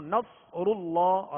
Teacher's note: تو اس کو پر بھی پڑھنا ہے اور ہونٹ گول بھی نہ ہو. نصر اللہ را بھی پر پڑھیں گے، را پر پیش ہے، اور آگے اللہ عز و جل کا لام ہے.